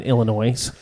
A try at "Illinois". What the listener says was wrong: There's no oys.